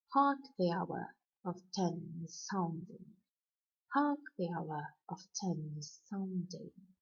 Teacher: As opposed to iamb, it starts with a stressed syllable and ends with an unstressed syllable. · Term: trochee